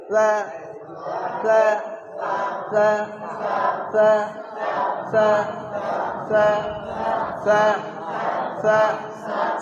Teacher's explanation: সাটা তোতলা ভাব, জিভের ডগা নিচে দাঁতের গোড়ায় লাগাতে হবে, আর উপরের দাঁতের কিনারাটা জিভে আসতে ঠেকাবেন একটু উপরে, দাঁতের মানে জিভের ডগার একটু উপরে।